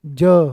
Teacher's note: ज अंदर ही बोल जाता है, नाक तक गुंजन हो जाती है।